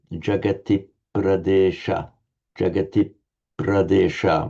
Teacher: with a slight pause on the consonant cluster